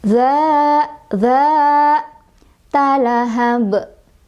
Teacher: Ada qolqolah kubro, sebabnya karena ada huruf qolqolah yang sukunnya itu karena berhenti, bukan sukun asli, yaitu di huruf ba.